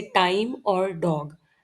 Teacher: जब टंग tip alveolar ridge को touch करता है तब ट और ड जैसे साउंड्स बनते हैं, जैसे टाइम और डॉग।